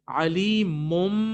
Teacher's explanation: इसको हम अपनी नाक में गुन्ने की तरह लेके जाते हैं, लेकिन हम बा को टोटली कट ऑफ नहीं करते कि बा स्किप हो जाए। ऐसा नहीं होता कि बा स्किप हो गया और बा खत्म हो गया, नहीं, बल्कि पहले हमने इसको मीम से चेंज किया और मीम से चेंज करने के बाद फिर दोबारा उसको पढ़ा।